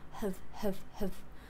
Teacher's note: when we say the sound it's just an out breath the tongue doesn't take part